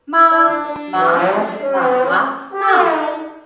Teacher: The third tone has a kind of twisting point, which means you have to start with a pretty low pitch, go down, then go up.